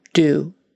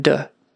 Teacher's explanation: Make that a good, strong, long U. Do, rather than duh.